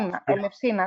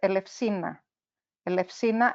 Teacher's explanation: So there's an emphasis on the first syllable there.